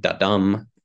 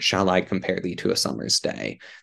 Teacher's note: syllables that go unstressed and then stressed